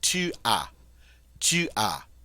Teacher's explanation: Notice as, but we don't pronounce the S. It's a final consonant. We're going to ignore it as far as pronunciation, and we're simply going to say tu as.